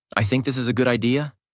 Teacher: let your voice fall at the end of the sentence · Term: falling tone